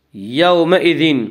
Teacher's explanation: وجوہ یومئذ، یومئذ واولین وہ جو ساکن ہو اس سے پہلے زبر ہو، واولین کو نرم آواز کے ساتھ جلدی پڑھیں گے